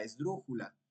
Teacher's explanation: el acento está en la antepenúltima en dru entonces Esta es una palabra esdrújula y por lo tanto tenemos